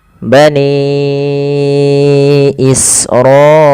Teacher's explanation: Bani awalnya 2 harakat nih, ra awalnya 2 harakat. Karena datang setelahnya hamzah maka dipanjangkan dia 4 atau 5 harakat. · bani ini panjangkan suara ni-nya sepanjang 4 atau 5 harakat. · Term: mad wajib muttasil